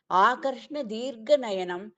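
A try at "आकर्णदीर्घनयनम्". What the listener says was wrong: ஆகர்ண தீர்ఘநயனம். ஆகர்ஷ்ண இல்ல, ஆகர்ண.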